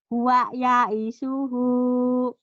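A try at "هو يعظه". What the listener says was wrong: Iya, huwa ya'izuhu. Bukan ya'isuhu ya, ya'izuhu. Huwa ya'izuhu.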